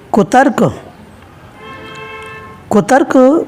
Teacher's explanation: क पर लघु मात्रा है और तय के बाद संयुक्त अक्षर है, इसलिए तय लघु वर्ण होते हुए भी उच्चारण में अधिक समय लगा। इसलिए इसमें गुरु के रूप में मात्रा लगी है, यानी लघु गुरु लघु आया है। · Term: गुरु मात्रा